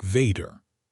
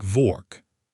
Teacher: German speakers make W sound like V.